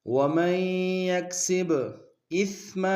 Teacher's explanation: سا کو باریک ادا کریں گے، میم کو تنوین غنہ کریں گے۔